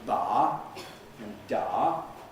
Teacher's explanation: we have one sort where there's no delay, as in ba and da. Here, the voicing starts up pretty quick.